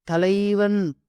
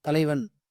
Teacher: அந்த ஒரு ஐ அந்த இடத்துல ரெண்டு மாத்திரை ஒலிக்கும் ஆனா ஒரு மாத்திரைல ஒலிக்குது